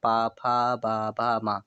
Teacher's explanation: पा फ ब भ म ओष्ठ की बात करेंगे। दोनों ओठ आपस में टकरा रहे हैं जब ये वर्ण आप लोग बोलते हैं